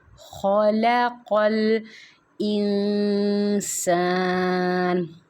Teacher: خا کو بھی موٹا کر کے پڑھیں گے اور قاف کو بھی